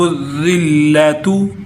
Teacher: وَضُرِبَتْ عَلَيْهِمُ الذِّلَّةُ، وَضُرِبَتْ علیہم، جب میم کو ذال کے ساتھ ملاتے ہیں تو بعض لوگ یہاں ذال کو سخت کر دیتے ہیں، حالانکہ سخت نہیں، سیٹی والا نہیں، بلکہ یہ نرم حروف میں سے ہے